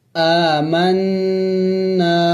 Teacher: نون مشدد ہے تو ہم نے یہاں پہ غنہ کرنا ہے، یعنی ناک میں آواز لے کے جانا ہے. آمنا، اور الف مدہ بھی ہے تو اس کو ایک الف کا مقدار لمبا کرنا بھی ہے.